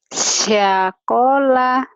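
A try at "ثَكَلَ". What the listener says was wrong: Anginnya jangan ditiup gede-gede, pelan aja. Sakola, tuh anginnya nggak ada. Sakola tipis ya. Tipis. Cadel. Sakola, iya.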